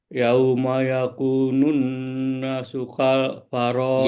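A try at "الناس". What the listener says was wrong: Yawma yakunun nasu. Nasu. Nanya panjang.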